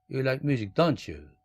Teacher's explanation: 몰라서 물어볼 땐 올리고 너 음악 좋아하잖아. 이렇게 얘기할 때는 You like music, don't you? 이렇게 거꾸로 falling intonation 떨어뜨립니다. 그러면 내가 음악 좋아한다는 것을 말하는 내가 확신하는 겁니다.